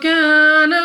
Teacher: الف سے پہلے زبر الف مدہ 2 سیکنڈ تک لمبا کرنا ہوگا